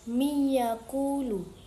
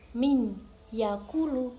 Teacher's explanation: nun dilebur dan didengung serta dibaca selama dua harakat. Idgham bighunnah memiliki arti melebur dengan dengung.